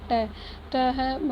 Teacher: अल्पप्राण अघोष वर्ण का उदाहरण ट है